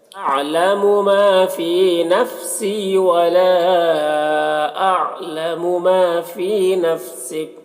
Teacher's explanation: ولا میں مد منفصل ہے، اسے 3 4 الف کے برابر کھینچیں گے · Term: یا مدہ